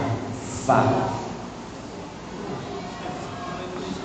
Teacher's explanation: fa itu kan dia gigi seri atas menempel ke bibir bagian dalam.